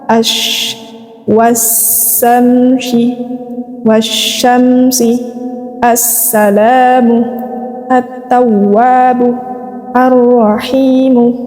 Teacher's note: Al bertemu dengan huruf-huruf Syamsiyah ini maka dia dibaca idgham maka al-nya ini langsung dimasukkan kepada huruf-huruf Syamsiah teman-teman jadi al-nya tidak perlu dibaca